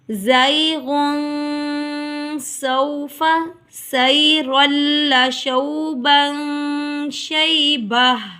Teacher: سیرن دو زبر کے بعد لام آ گیا، یہاں پر ادغام بلا غنہ ادا ہوگا